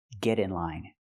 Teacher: We hear the pronunciation of T change to a fast D because it's between vowels.